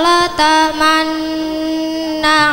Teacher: Ismam ialah mengumpulkan dua bibir sebagai isyarah doma ketika mengucapkan nun bertasydid.